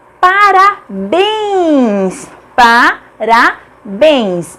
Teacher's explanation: A última sílaba é a tônica, bens, portanto é acentuada porque é uma oxítona terminada em ens.